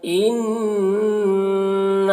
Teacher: ان نون مشدد ہے، غنہ کے ساتھ میں پڑھیں گے اسے